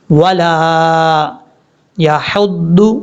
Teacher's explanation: العظیم ولا یحض، واو کو پڑھتے وقت ہون گول کریں گے، لام کے آگے الف ہے، اس الف کی وجہ سے لام کو لمبا کریں گے